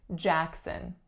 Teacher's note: The first sound is a tense a sound